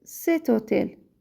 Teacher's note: H, deməli, hərfi səslənmədiyi üçün həmçinin cet hotel şəklində deyirik.